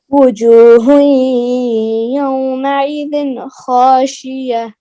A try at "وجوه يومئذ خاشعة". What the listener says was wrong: خاشعہ عین ہے نا